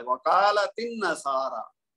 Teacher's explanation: अन्नसारा अलहदा बोलेंगे तो हमजा पढ़ा जाएगा, लेकिन जब कालत के साथ मिलाएंगे तो ता को नून के साथ मिला देंगे इकट्ठा और इसका जो हमजा है वो गिर जाएगा क्योंकि वो हमजातुल वस्ल है, वकालतिन नसारा।